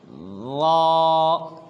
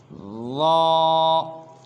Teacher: زبان کی نوک کو سامنے والے 2 دانتوں کی جو نوک ہے اس کے آدھے حصے سے لگائیں گے، جیسے را، جیسے آپ سکرین پر بھی دیکھ رہے ہیں، را۔